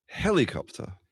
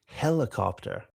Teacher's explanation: I'm doing more like a heli rather like a kind of a pretty clear E, whereas yours is more like a schwa, it's more like a helo-copter.